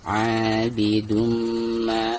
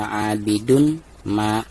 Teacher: Di sini mim ya, dan termasuk idgham biguna. Maka cara membaca tanwin yang di atas dal tersebut itu harus diidghamkan langsung ke huruf mim yang ada di depannya. Abidumma disertai dengan dengung ya.